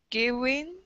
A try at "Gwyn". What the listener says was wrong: So try to merge the gw sounds a little bit more so that you've got gwyn, gwyn.